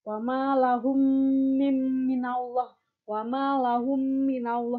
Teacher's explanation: Jadi mim ketemu mim, jadi kayak mimnya didengungkan.